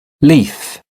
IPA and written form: liːf (leaf)